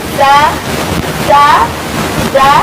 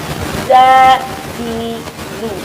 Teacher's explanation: zai itu dikeluarkan murni, sempurna oleh suara tanpa diiringi oleh nafas. Tidak boleh zai itu dikeluarkan dengan beriringan nafas. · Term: jahar